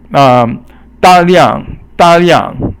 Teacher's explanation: means in a large amount, all fourth tone